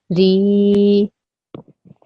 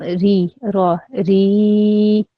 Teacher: when you say the ra, it has to be 2 seconds long at least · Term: Ya Madda